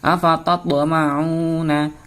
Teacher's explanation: Huruf ta berharokat sukun. Ada huruf ta berharokat sukun. Membacanya harus dimantulkan. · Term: Bacaan qalqalah